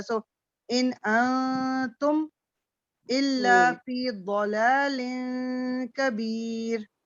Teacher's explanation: ایک اور چیز نون کے بعد بھی وہی رول ہے جو تنوین کا رول ہے کہ آپ کو اس کو تھوڑا ناک میں آواز نکال کے نون تو جہاں بھی آتا ہے نا اس کو غنہ کرنا ہی پڑتا ہے